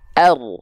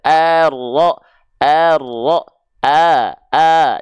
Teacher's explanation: Hamzah wasalnya enggak perlu kita panjang-panjangkan ya langsung masuk Ar jangan diseret-seret